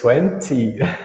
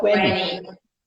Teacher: Só que o inglês americano ele tira o T da palavra e fala só 20.